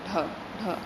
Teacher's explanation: एकदम से जीभ झटके से क्या आती है नीचे आ जाती है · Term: उत्तिष्ठ व्यंजन